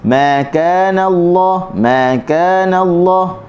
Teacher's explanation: Okey, walaupun kita ramai, kita dengar ramai yang baca dengan kana, ada angin pada huruf kaf. Sebenarnya huruf kaf ni dia tidak ada angin ketika mana berbaris.